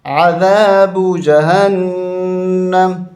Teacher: यहाँ वक़फ़ कर देंगे और नून मुशद्दद गुन्ना करेंगे